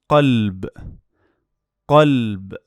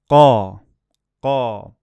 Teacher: Sound qa is like K sound, but it's a voiced sound with the ah sound. And it's a dark and heavy K from the back of your tongue with the soft palate.